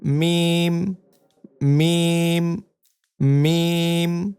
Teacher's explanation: দুই ঠোঁটের শুকনা জায়গা হইতে উচ্চারিত হয়